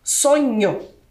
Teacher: o NH com um som nasalizado parece também que tem o i mas não é ele fica